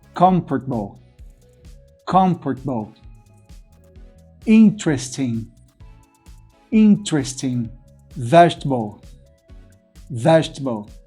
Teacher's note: 3 sílabas, a primeira sílaba aqui é forte, então a primeira vogal da segunda sílaba não é pronunciada.